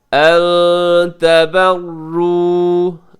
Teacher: ان میں نون ساکن کے بعد تا ہے تو یہاں اخفا کیجیے گا